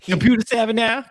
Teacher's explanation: Drops the final R sound, saying computer as computer. This is a trait of non-rhotic accents, most commonly found in white speakers in the South and in black speakers nationwide.